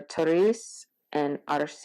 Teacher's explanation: it just sounds like a Spanish like a trilled r